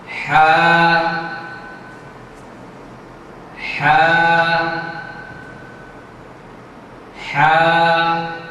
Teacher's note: এই কণ্ঠের শুরু, মধ্যখান এবং শেষ ভাগ, এই গলা এবং কণ্ঠনালীর মধ্যখান থেকে এই হরফটি উচ্চারিত হবে।